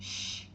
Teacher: Sim, de uma forma bem simples, quando você põe a mão aqui na frente das suas cordas vocais, em alguns sons elas vibram, em outros não. Se a sua corda vocal não vibra, por exemplo, sh, ele é um som não vozeado